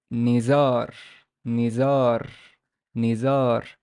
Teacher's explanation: The noon has a kasra. The z has no vowel, but it's followed by an alif. So we know that it's a long vowel ah sound. And the re, because it's a speech final, we're going to put sukun.